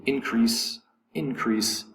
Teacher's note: the word in or the syllable in is going to be accented